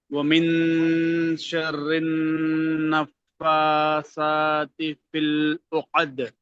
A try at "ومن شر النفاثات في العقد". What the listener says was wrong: ఇక్కడ కొంచెం ఎక్కువ దీర్ఘం తీశారు, త్వరగా కలపాలి. ومن شر النفاثات في العقد في العقد.